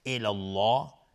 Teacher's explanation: لفظ جلاله مفخم هست چون قبلش فتحه اومده